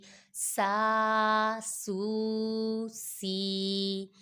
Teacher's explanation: سین الف زبر سا، سین واو پیش سو، سین یا زیر سی، سا سو سی. یہ حروف صافیریہ میں سے ہے، اس میں بھی سیٹی کی آواز نکالیں گے